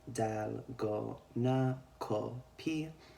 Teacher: They don't have the F sound in their alphabet, so they utilize the P sound typically to represent an F.